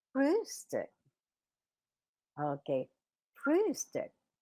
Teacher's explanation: Okay, Frühstück. Okay, but the first umlaut is longer than the second umlaut